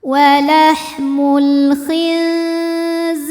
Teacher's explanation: Sebab ada ya sukun yang sebelumnya berbaris kasrah maka dibacanya panjang dua harakat. · Walahmul khinziri. Huruf ro dibunyikan secara tarqik sebab robaris di bawah kasrah. Maka dibacanya tipis. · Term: mad thobi'i zohiri